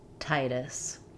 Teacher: In American English, we flap the T. It sounds more like a light D. Titus. It's not wrong to say Titus. · For Titus, letter I says the I, like in tight or night. In American English, we flap the T. It sounds more like a light D.